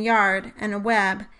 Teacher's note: In English, the glides are the y and w sounds, like in yard and web, and they are both created much like a high vowel, but with a slightly more extreme tongue position. Also, glides cannot be sustained. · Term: glide consonants